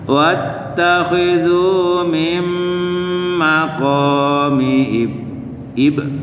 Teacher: Jadi ada pantulan dikit qalqalah sughra.